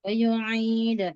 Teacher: Masih ke hidung ya. Huruf ain dilatih supaya jernih dari gunnah.